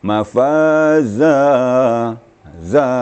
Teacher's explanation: Jadi kapasitas panjangnya adalah satu alif atau 2 ketukan. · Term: mad iwad